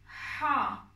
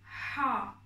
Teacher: Ha harfi boğazdan söylenen bir harf. Kalın ve tok bir şekilde söyleyeceksiniz. Biraz boğazınızı sıkmanız gerekiyor bu harfi söylerken.